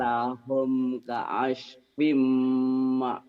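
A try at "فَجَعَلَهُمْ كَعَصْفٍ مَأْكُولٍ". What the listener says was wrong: Lumayan, cuman tinggal anginnya aja dikurangi. Faja'alahum ka'as. Jadi anginnya seperti nggak keluar, lembut. Seperti kita minta sun sama istri kita. Masun dong, masun, sun, kaos pimakul.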